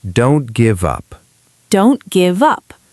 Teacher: The T in don't disappears